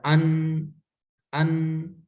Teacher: نون کا ساؤنڈ ہلکا سا جاری ہے